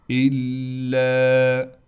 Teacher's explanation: اِن هُوَ، نون پر غنہ بالکل نہیں کیا جائے گا، إِلَّا، حمزہ کو لام سے ملائیں گے، لام پر تشدید ہونے کی وجہ سے تھوڑا ٹھہراؤ کیا جائے گا، لام کے بعد الف ہونے کی وجہ سے لام کو ایک الف کی مقدار کھینچیں گے